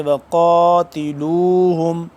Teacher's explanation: قاف کھڑا زبر قا، تھوڑا سا لمبا کریں گے